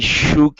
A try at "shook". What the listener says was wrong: All right, let's go to the word shook instead of shook. Open your mouth a bit.